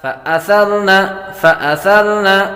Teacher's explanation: سا کو ہمیشہ نرمی کے ساتھ پڑھتے ہیں، سیٹی کی آواز نہیں آئے گی